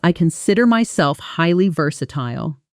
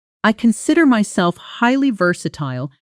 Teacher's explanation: The stress falls heavily on the word versatile itself and the smaller connecting words like myself and highly get slightly compressed and faster.